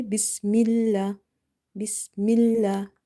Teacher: Here we will keep this lam of the word Allah light because there is a kasra before it. So every time you see before the lam in the word Allah specifically I'm speaking about, if you see there is a kasra, you will make this lam light.